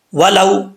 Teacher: واؤ ساکن سے پہلے زبر ہو تو واؤ جو ہے مدہ نہیں ہوتا، یعنی واؤ لین ہوتا ہے، واؤ لین سے مراد اس کو لمبا نہیں کریں گے